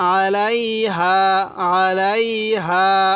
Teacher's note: আইনটা একটু চাপ দিয়ে পড়লে আইনটা সহি উচ্চারণ হবে।